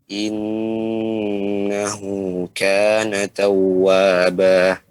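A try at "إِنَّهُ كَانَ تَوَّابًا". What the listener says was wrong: ya, jangan langsung masuk. Setiap waw atau ya bertasydid maka dia digenjot. Ya, ditekan sedikit.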